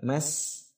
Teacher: huruf sin sukun itu melebar, menyebar